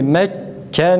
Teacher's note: Nunda biraz duruyoruz. Gunne sıfatı var değil mi?